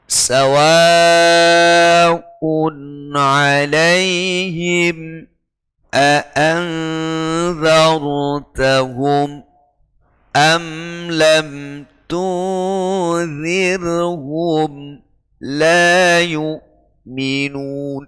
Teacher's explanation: terbaca putus agak lama sehingga terdengar menjadi bacaan saktah